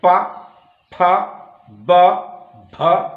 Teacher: आप देखिए दोनों ओठ, अब ओठ क्या कर रहे हैं? प, दोनों ओठ सट रहे हैं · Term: प वर्ग